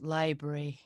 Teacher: as if they skip the second syllable yeah as if there is no r or a there yeah